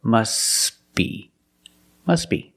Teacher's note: But if you link the words, you pronounce it must be, must be. The T is silent because it's between consonants when you link the words. Must be. Link the sounds s with a b.